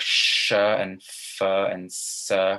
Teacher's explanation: And when you speak, they vibrate, but not for every sound. For sounds like sh and f and s, it doesn't vibrate. It's voiceless, as we call.